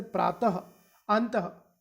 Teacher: विसर्ग वाले शब्दों को बोलते समय ह की हल्की आवाज सुनाई देती है